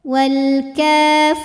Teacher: karena ada Ya Sukun didahului baris kasrah maka huruf ro panjang dua harakat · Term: Mad thobii